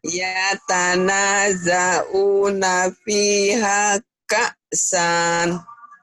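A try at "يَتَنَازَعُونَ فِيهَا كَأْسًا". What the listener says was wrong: Jangan panjang. Ka'san. Ka'san.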